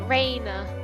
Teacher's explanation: Like you hold on the A a bit. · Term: long A